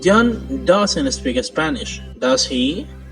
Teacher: john doesn't speak spanish does he if the intonation of the question tag goes down it means you are checking or confirming information that we are sure of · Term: falling intonation